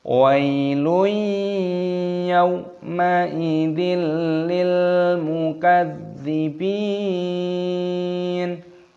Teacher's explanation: tanwin bertemu dengan huruf ya ini hukumnya dibaca Idgham Bighunnah dimasukkan dan disertai berdengung